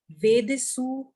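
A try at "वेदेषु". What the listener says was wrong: Vede, S ke liye dot hai. When there is a dot under S, you have to read it Sha, not Sa.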